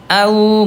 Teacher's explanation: Dari segi suara huruf wawu dia rokhwah, dia lemah Ayah Bunda, suaranya mengalir ya, au gitu ya.